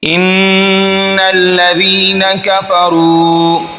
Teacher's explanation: गुन्ना कहते हैं नाक से आवाज़ सख्ती के साथ निकालना। एक अलिफ के बराबर नाक में आवाज़ को दबा कर रखेंगे तो ये गुन्ना होगा।